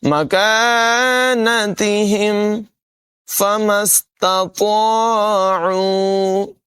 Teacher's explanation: مَكَانَتِهِمْ فَمَا اسْتَطَاعُوا، میم کو سین سے ملائیں گے، 2 نقطوں والا جو تا ہے اس کی آواز باریک ہوگی، اور اس کے بعد جو طا ہے یہ حروف مستعلیہ میں سے ہے، اس کو پر ادا کریں گے